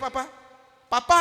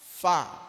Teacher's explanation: Kalau makhraj huruf fa, gigi atas ketemu bibir bawah. Fa fa kalau nak nampak giginyo.